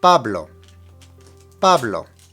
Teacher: Pablo needs to have the emphasis on the very first syllable